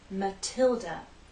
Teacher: Stress on the second syllable, Matilda. The T is stressed, so we have a true T sound